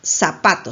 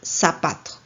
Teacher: la confusión del fonema teta que representa la z por el fonema s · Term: ceseo